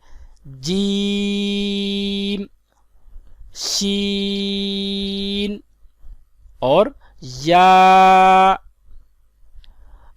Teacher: ان 3 حروف کا مخرج زبان کے درمیان اور تالو کے درمیان سے ادا ہوتے ہیں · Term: حروف شجریہ